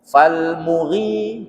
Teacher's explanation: Jadi yang panjang itu ri-nya bukan mu-nya. Gitu ya. Fal muri.